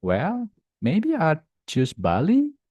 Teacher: rising intonation for uncertainty or follow up